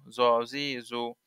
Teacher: জ জিব্বার আগা হতে মোটা ভাবে আদায় হবে